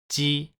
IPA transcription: ʑi